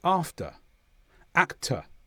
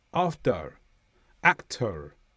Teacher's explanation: In the south of the United Kingdom, where I come from, the R at the end of a word after a vowel is usually not pronounced at all. I would say after actor uh uh no R at all. · in the USA and some parts of the north of the UK, there will be a hint of a R at the end.